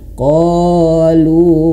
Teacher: Ingat, mad tabi'i itu satu ayun saja. Mad tabi'i itu 2 harokat, dia durasinya 2 harokat, namun 2 harokatnya ini satu ayun saja. Jangan kepanjangan.